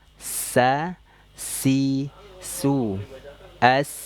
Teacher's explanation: Shad Zai Sin nah ini ujung lidah sejajar denganis di bawah sa itu sejajar dengan gigi seri bawah Dia memiliki sifat asofir berdesis